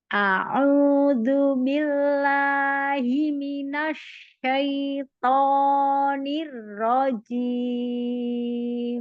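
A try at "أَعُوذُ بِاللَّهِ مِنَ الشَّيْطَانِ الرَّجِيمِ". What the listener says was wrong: Ini jangan dinaber ya, jangan nirrojim.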